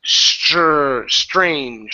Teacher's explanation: with the TR it's pronounced like a CHR